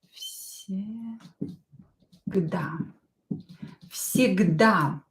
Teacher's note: Because V is voiced, but it is located near voiceless S. Near voiceless S. It will become voiceless too. So V will become F.